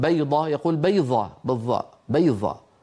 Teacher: استسهلوا الظاء فيعني يجعلون الضاد في كلامهم اليومي ظاء